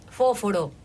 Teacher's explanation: y lo más obvio es la S aspirada